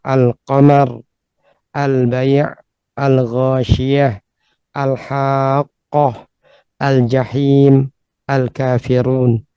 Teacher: Kita perhatikan lam dari semua ini terbaca dengan jelas, ya, dengan wadih. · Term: lam al-qamariyah